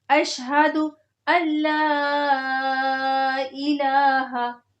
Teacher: جو بیچ میں نون ساکن آ رہا ہے وہ نہیں پڑھا جائے گا۔ اس کی وجہ یہ ہے کہ جب ساکن ورڈ کے بعد اگلا ورڈ جس پہ تشدید ہوتی ہے وہ آ جاتا ہے تو بیچ میں جو ساکن ہوتا ہے وہ نہیں پڑھا جاتا۔